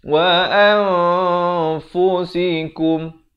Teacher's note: Siapa baca an jadi izhar. Di sini kena baca ikhfa. Disamarkan. Kadar 2 harakat.